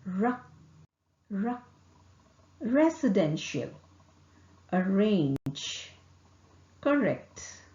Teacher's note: is articulated by raising the tongue tip towards the heart palette the tongue is curved backward slightly and does not touch the heart palate vocal cord vibrates ra